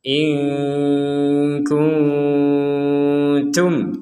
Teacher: Nun mati bertemu kaf, kita baca samar.